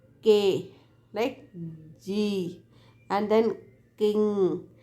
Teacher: formed by putting the back part of the tongue against the soft palate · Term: velar